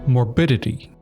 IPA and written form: mɔrˈbɪdɪti (morbidity)